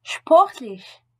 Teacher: En début de mot ou précédé d'un préfixe, SP et ST se prononcent comme le CH, français, CH, de charbon, suivi d'un P ou d'un T.